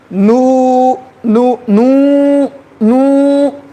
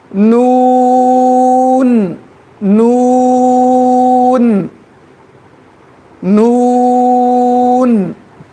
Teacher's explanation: نون کے لیے ناک میں آواز لے کر جا سکتے.